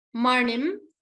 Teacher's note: It is not a simple na. It is na. You have to roll your tongue a little bit.